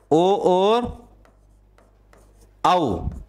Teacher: तो इसमें आपको ध्यान रखना है, कंठोष्ठम में ओ और औ, इनको कंठोष्ठम वर्ण बोलते हैं। इनका उच्चारण स्थान कंठ और ओष्ठ इनसे मिलकर होता है